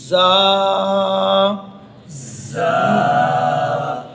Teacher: زبان کی نوک اس ثنایا سفلا کے اندرونی حصے سے لگے گی تو زا ادا ہوگی، لیکن اس میں سختی بھی ہے، سیٹی بھی ہے، یہ حروف صفیریہ میں سے بھی ہے۔